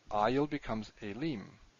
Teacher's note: when you add an ending, the stress moves and the diphthong contracts